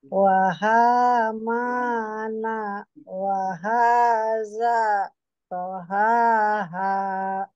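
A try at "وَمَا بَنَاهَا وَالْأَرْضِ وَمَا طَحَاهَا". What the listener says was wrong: Gitu. Sip, mantap ya.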